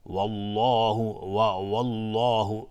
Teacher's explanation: وقتی که لفظ جلاله مفخم باشه، مثلا ما بگیم والله والله، اصلا دهان جمع میشه، والله والله نمیگیم اگر ما دهان رو از هم باز بکنیم در هنگام تلفظ لفظ جلاله، وقتی حکمش مفخم باشه یا تفخیم یا یعنی تفخیم باشه یا غلیظ بخوایم حکمش تلفظ بکنیم، اگر دهان رو از هم باز بکنیم اشتباه تلفظ میکنیم.